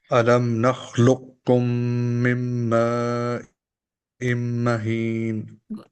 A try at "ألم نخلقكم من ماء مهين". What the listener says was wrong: Again, here it needs to be ma'im mahin. And be careful with your mudud. Mudud need to be like 4 counts. It's a wajib.